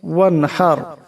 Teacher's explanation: ওয়ানহার, এখানে হা, বড় হা গলা থেকে চাপ দিয়ে আওয়াজটা বাহির করতে হবে